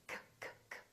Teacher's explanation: if we say book, this K is voiceless.